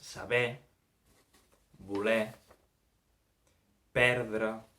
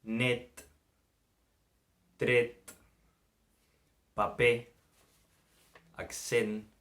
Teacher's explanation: D'una banda tenim la E oberta, E, la E tancada, E